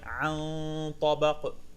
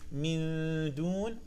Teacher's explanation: the ta will be different because it is mufakham